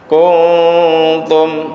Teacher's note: Jadi dengung nunnya itu mendekati ta. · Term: ikhfa